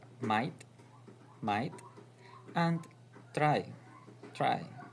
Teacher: If you start with the sound A and glide to the sound I, you get the diphthong I. I. Some examples are might, might, and try, try.